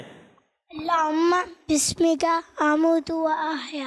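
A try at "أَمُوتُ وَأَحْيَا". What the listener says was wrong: आमूतु नहीं है, अमूतु व अहया, ठीक है।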